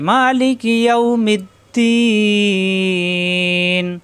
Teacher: মা একালিফ টান, লিকি টান নেই